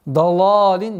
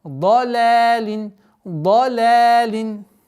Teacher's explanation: Обратите внимание, да с фатха, но нужно знать, что лям не подчиняется впереди стоящему звуку